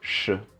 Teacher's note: Och det som händer är att konsonanten blir retroflex. Och retroflex, det betyder att man drar tillbaka tungan, man rullar tillbaka tungan. Så istället för att tungan är rak, som i S, så rullar man tillbaka så det blir sh.